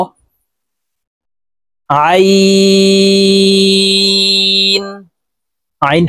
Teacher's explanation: আইন হরফকে হলকের মধ্যখান থেকে চাপ দিয়ে উচ্চারণ করতে হবে, কারণ আইনের মাখরাজ হলকের মধ্যখান থেকে হবে।